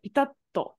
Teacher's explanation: Pitatto with a glottal stop and a to.